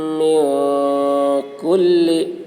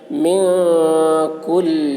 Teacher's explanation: نون ساکن کے بعد حروف اخفا میں سے کاف آ رہا ہے، اس لیے نون کی آواز کو ناک میں چھپا کر پڑھیں گے، اس کو اخفا کہتے ہیں.